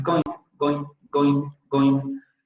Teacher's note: lo van a pronunciar con la nasal alveolar sonora